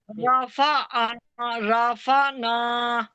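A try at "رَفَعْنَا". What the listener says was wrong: को रॉ को मोटा पढ़ें।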